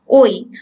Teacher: ওইকে যদি তুমি ভাঙো দেখবা অ প্লাস ই পাওয়া যাচ্ছে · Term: যৌগিক স্বরধ্বনি